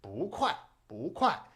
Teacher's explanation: 2nd tone, 4th tone is actually a very natural flowing tone pair.